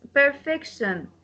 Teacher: The stress will go to the second from the last, the second last syllable. The last syllable is shan.